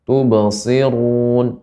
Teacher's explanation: Ru ketika dia berharakat dhammah maka dibaca dengan tebal. Run, ya. Run dengan run kan berbeda.